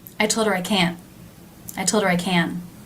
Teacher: But do you notice that the last can, a little smoother and a little longer?